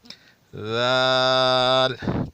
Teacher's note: زبان کو دونوں دانتوں سے تھوڑا باہر نکالیں، اوپر اور نیچے والے دانتوں سے تھوڑا باہر نکالیں، اور زبان اوپر والی دانتوں کو ٹچ ہونا نہ پائے، اسے لگنا نہ پائے۔